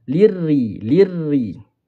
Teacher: Sambung lirri lirri bukan lirri. Jangan tebalkan ra ni. Ra nipis sebab baris bawah.